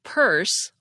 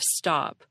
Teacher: we aspirate the P at the beginning of Purse all day long but we swallow it at the end of stop